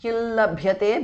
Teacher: anuswara changes to the nasal of l